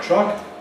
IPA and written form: trʌk (truck)